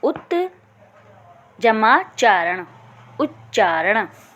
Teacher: त का यदि च के साथ मेल होगा तो च में बदल जाएगा।